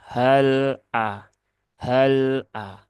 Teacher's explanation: lam ini sifatnya tawasut maka ya alirkan sedikit saja hal a hal a ya seperti itu tidak perlu dipantulkan tidak · Tidak ada sifat kolkolah. Maka jangan hale ya. Dan dia juga tidak punya sifat syiddah ya. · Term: huruf lam, tawasud